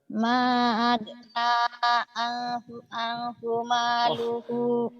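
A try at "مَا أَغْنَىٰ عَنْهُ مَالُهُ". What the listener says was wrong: Jangan ang dapat dari mana? Mana nggak ada ang? Ma'agna anhu ma.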